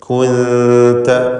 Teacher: ഇതിലുള്ള സാക്കിനത്തായ നൂനിനെ ഇഖ്ഫ ചെയ്യണം, അവ്യക്തമാക്കി മണിച്ചുകൊണ്ട് ഉച്ചരിക്കുക. ഇഖ്ഫ ഹഖീഖി എന്നാണ് ആ ഇഖ്ഫ എന്ന് പറയുക.